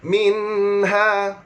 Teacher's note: Hukumnya adalah izhar halqi, maknanya nyata tanpa dengung